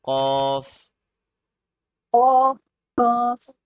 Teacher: It's a heavy letter and it's a hard letter. And the letter Qaf comes from the back side of the roof of the mouth, from this place.